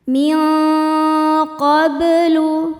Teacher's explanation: Ada hukum ikhfa hakiki yaitu ikhfa hakiki ab'ad karena nun sukun bertemu dengan huruf qaf. Cara bacanya nun dibunyikan samar-samar menuju makhraj qaf disertai bunyi dengung. Nah, suara yang masuk hidungnya banyak atau dengungnya banyak karena qaf makhrajnya jauh dari nun.